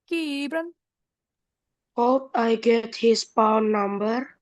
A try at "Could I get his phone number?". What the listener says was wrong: Oh, bacanya masih satu-satu. L-nya silent. Could could. Jadi O-nya juga hilang bunyinya.